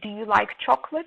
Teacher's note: the common mistakes are that students do not raise their pitch so they say do you like chocolate and it sounds like a statement